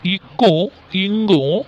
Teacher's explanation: இக்கும் இங்கும் முதல் நா முதல் அன்னத்தை பொருந்த பிறக்கும்.